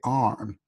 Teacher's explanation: in the past, yes, they used to pronounce the R in Britain, like arm. They used to say arm, and this is why in America they pronounce arm because it belongs to an older kind of English.